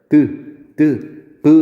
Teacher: 입을 막았다가 소리가 터져 나오잖아요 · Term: 파열음